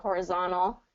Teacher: that t kind of gets swallowed up